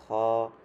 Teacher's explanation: এটা হচ্ছে একটু গলা থেকে একটু খড়খড় যেরকম আওয়াজ এরকম হবে,